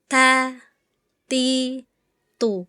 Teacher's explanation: Untuk bunyi ta, bagian belakang lidah rileks dan diturunkan.